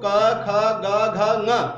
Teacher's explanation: कवर्ग का जो स्पर्श स्थान है वो है कंठ। इनका उच्चारण करते समय कंठ से स्पर्श होता है वायु का।